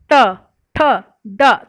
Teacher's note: तो ये जुबान हमारी उल्टी होके तालु को स्पर्श करती है, इसलिए इसको बोलते हैं मूर्धा।